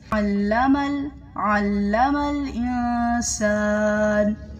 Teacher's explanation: عین گلے کے بیچ والے حصے سے ادا ہوتا ہے